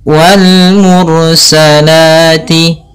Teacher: alif lam yang ditulis dan dibaca huruf lamnya dengan jelas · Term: alif lam qamariyah